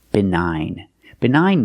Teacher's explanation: the GN is at the end so the g is silent